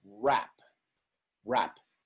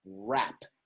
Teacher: of those words that begin with wr their only signaling that you need to round your lips to pronounce the initial r